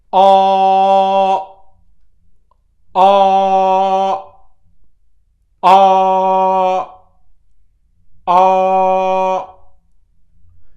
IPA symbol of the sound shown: ɑː